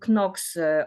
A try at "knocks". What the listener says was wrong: Knocks. No, no, don't pronounce, don't sound the K. Don't pronounce.